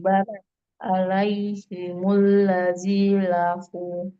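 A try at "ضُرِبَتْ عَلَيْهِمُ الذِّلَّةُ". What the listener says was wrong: Alaihimul lazi. Alaihimul zillatu. Tasdidnya ke zal ya. Alif lam samsi ya itu. Alaihimudz-zillatu ya, bukan ladzi. Itu tasdidnya dan alif lamnya nah, tasdidnya perhatikan tasdidnya di zal.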